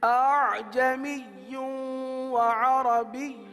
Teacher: پہلی ادائیگی میں دونوں حمزہ تحقیق کے ساتھ ہوئے، جو کہ غلط ہے کیونکہ ہمیں دوسرے حمزہ میں نرمی کرنی ہے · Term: تسہیل